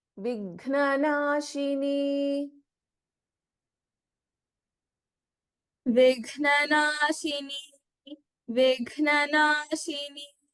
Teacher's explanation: Vighna, we have Gha as Mahaprana in this.